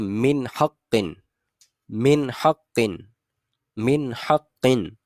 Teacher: میں نے نون کے اوپر کسی بھی قسم کا کوئی غنہ نہیں کیا، اس کو بڑھایا نہیں ہے، فقط ایک ظاہر کیا ہے کہ ہم نے نون کو پڑھا ہے.